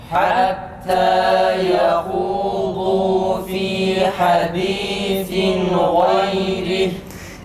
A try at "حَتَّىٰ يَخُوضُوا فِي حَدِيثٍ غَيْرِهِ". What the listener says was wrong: Esrelerde bir de dudak geri çekilsin. Biraz özdeki sen biraz daha geri çek dudağın. Esre güzel çıkar.